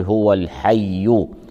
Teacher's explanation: في كلمة الحي اللام لام التعريف قمرية، تظهر مع حرف الحاء كون الحاء حرفا قمريا، والياء مشددة. نضغط الياء المشددة لبيان تشديدها، فنقول هو الحي.